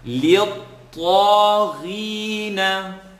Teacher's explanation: the ta is being stretched for 2 because of the alif maqsura